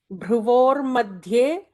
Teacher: Notice the bhra is the Mahaprana bhra.